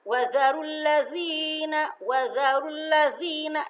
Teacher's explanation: Ini za adanya di ujung lidah.